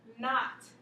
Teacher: Like tie your shoe in a double knot. You just hear the N, you don't hear the K.